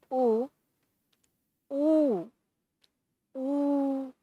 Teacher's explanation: तो एक मात्रिक ह्रस्व संज्ञा, द्विमात्रिक दीर्घ संज्ञा और त्रिमात्रिक या जो देर तक बोला जाता है वो प्लुत है।